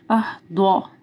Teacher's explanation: ضاد کو موٹا پڑھنا ہے